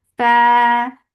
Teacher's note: give hams in fa, make it 2 counts long